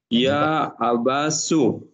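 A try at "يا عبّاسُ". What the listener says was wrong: Ya Abbasu. Ada tasydidnya di Pak.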